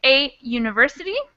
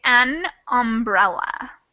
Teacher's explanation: because of the way we pronounce that letter u it kind of starts with the y sound not really a vowel sound